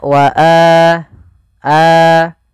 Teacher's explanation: Alif wau atau ya maka itu kita namakan dengan mad badal panjangnya adalah dua harakat sebagaimana Mad Thobi'i